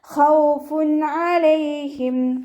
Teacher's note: തെൻവീനിലുള്ള നൂനിൻ്റെ സൗണ്ടിനെ വ്യക്തമാക്കി മണിക്കാതെ ഉച്ചരിക്കുക കേട്ടോ.